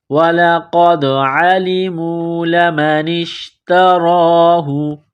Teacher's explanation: وَلَقَدْ عَلِمُوا، عَلِمُوا لَمَنِ اشْتَرَاهُ، نون کو شین کے ساتھ ملانا ہے، لَمَنِ اشْتَرَاهُ، تا کو باریک کرنا ہے، را کے اوپر کڑا زبر ہے، ایک الف کے لمٹ میں کھینچنا ہے